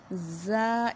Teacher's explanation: اور جو ہماری زا کی آواز ہے اس کو ہم نے منہ سے باہر نکالنا ہے، اور اس کی ادائیگی میں ہم نے سیٹی کی سی آواز پیدا کرنی ہے